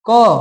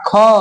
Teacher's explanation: अल्प प्राण यानी होता है जिसको बोलने में कम हवा निकले मुंह से और महा प्राण में जिसको बोलने में ज्यादा हवा निकले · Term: अल्प प्राण और महाप्राण